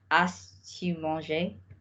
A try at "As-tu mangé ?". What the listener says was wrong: The as-tu mangé. So we don't pronounce the S. So we need to be aware that when we invert, the only thing that we're going to sound is the T.